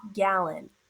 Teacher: the second syllable has a schwah